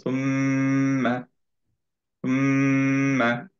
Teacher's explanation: প্রথম থেকেই মিমটা বলার সাথে সাথেই মুখটা ক্লোজ থাকবে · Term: গুন্না